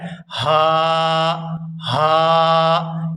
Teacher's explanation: جب ہم حلق سے ہا کو ادا کرتے ہیں تو اس کو اس طرح سے ادا کیا جاتا ہے: ہا ہا، یعنی آواز کو کھینچا جاتا ہے